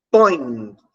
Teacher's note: o ó será a vogal porque ocupa uma posição superior na pirâmide e o é né ocupando a posição de I foneticamente terá o papel de semivogal então na palavra põe nós temos uma vogal e uma semivogal